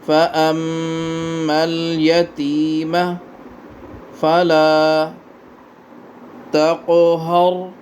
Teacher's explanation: میم پہ غنہ کریں، میم پہ شد ہے